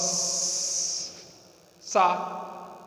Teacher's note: सांस स्वतंत्र रूप से निकल रही है, रगड़ पैदा करते हुए निकल जा रही है, कोई अवरोध नहीं। तो ऊष्म वर्णों के उच्चारण में मुख खुला रहता है, अवरोध नहीं होता, उच्चारण स्थानों का रगड़ करती हुई वायु निकल जाती है। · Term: ऊष्म प्रयास